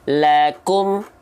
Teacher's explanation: Kalau karakter hams dari huruf kaf hanya berupa percikan, bukan terlalu berlebihan.